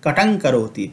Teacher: हैं। जैसे कटम करोति हम नहीं पढ़ेंगे, कटंग करोति पढ़ेंगे, क्योंकि यह अनुस्वार का उच्चारण अंग के अनुसार होगा और अंग जो है वह क वर्ग का पांचवा वर्ण है